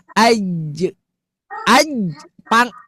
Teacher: tengah lidah nempel ke langit-langit atas. Begitu ibu turunkan langsung bunyi e